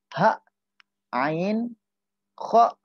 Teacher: ha, ain, kha, itu adalah termasuk daripada huruf halak. Artinya ada di bagian yang namanya bagian tenggorokan